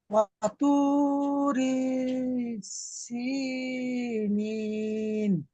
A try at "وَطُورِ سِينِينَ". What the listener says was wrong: মাশাআল্লাহ, খুব সুন্দর হয়েছে, কিন্তু র টান হয়ে গিয়েছে, এখানে র টান দেওয়া যাবে না। وطور سينين।